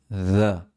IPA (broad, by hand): ð